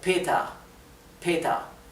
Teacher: la r final en inglés en alemán perdón casi es imperceptible como sonido de r suena más como una a